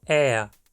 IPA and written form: ɛa (ER)